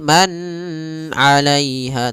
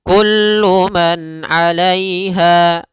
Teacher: Dan nunnya tidak boleh ditahan. Tidak boleh man alaiha tapi kullu man alaiha langsung. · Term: izhar halqi